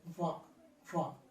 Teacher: దంతోష్ట్యం అంటే ఒక దంతాన్ని ఒక పెదవుని ఉపయోగిస్తాం వాని పలకడానికి. ఒక దంతం అంటే పై దంతాల వరుస, పై దంతాల వరుసను కింద పెదవిని టచ్ చేస్తాం.